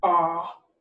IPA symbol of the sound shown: ɑː(r)